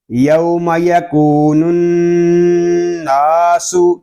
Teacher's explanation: آگے نون میں شدد ہے، اس کو غننے کے ساتھ ادا کریں گے